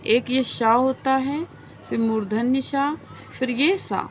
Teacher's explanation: ये तीनों ही स अघोष में आएंगे।